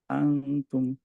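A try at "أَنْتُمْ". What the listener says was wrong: আন্তুম। আন্তুম। টাংটা আরেকটু সামনে আসবে। এই আপনার আম, সামনের যে টিপটা ওইটার কাছাকাছি থাকবে ভাইয়া। টাংটা, টাঙের টিপটা, হ্যাঁ। তুম। টাচ খেয়ে যাচ্ছে ভাইয়া, হ্যাঙ্গিং থাকবে, হ্যাঁ। তুম। তুম। আহ, ঝুলন্ত অবস্থায় থাকবে টাংটা ভাইয়া।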